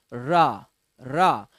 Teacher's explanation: रा को जब आप बोलते हो तो आपकी जो जिभ्या है उसमें कंपन आ जाता है, ऐसे गोलाकार। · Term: लुंठित